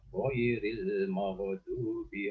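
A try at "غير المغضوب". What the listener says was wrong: Yang kedua di sini ada huruf ghain ya Pak ya. Huruf ghain ini hendaknya jangan sampai terpantul sebagaimana huruf qalqalah ya. Ghairil maghdu bukan magdu ya. Magdu. jadi terjadinya bisa menjadi magdu itu karena kita meletakkan ya huruf ini di lisan ya, di mulut. Jadi magdu itu terjadi karena kita menyamakan ghain ini dengan G bahasa Indonesia ya, G.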